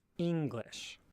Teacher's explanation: words in English such as the word English that start with a relatively high pitch and then drop again